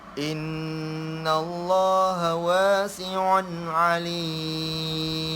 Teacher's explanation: In, tengok di in, nun yang bertasydid, nun yang bertasydid dan juga mim yang bertasydid kena ada dengung kerana dia dinamakan wajibal gunnah.